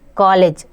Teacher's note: इसका उच्चारण आ और ओ स्वर के बीच की ध्वनि का उच्चारण होता है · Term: अर्ध चंद्राकार